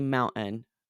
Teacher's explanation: I say mountain and I don't say the T at all, right? But a lot of places in the United States on the East Coast more, that T will be a little more pronounced.